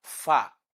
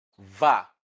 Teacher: labiodental sound, which means the lower lip is touching the upper teeth